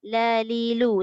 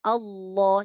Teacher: Kemudian lam ini asalnya istifal. La, li, lu. Sebutannya ringan, nipis. Bila lam itu masuk pada kalimah Allah, dia jadi Allah.